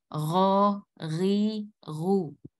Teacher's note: Ghain itu huruf tenggorokan ya, tenggorokan paling atas. Jadi dia mendekati lidah, dia sama dengan makhraj kha. · Jadi dia mendekati lidah, dia sama dengan makhraj kha. Ya, suaranya tebal karena dia huruf isti'lah, jadi suaranya harus ditebalkan. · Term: huruf ghain